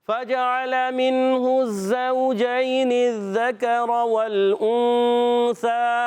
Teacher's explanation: سے آ گیا اخفا کریں گے اخفا کے معنی ہے چھپانا نون کو چھپاتے ہیں ایک الف کا غنہ کرتے ہیں